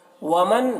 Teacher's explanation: نون ساکن کے بعد عین حروف حلقی میں سے ہے تو نون میں اظہار ہوگا، نون کو ظاہر کر کے پڑھنا ہے